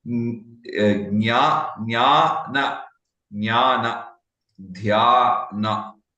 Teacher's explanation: So similarly for Jnana, Jnana, Dhyana, that is the right pronunciation as far as I know it. And Jna is basically a mixture of Ja and Nya. So half Ja and Nya.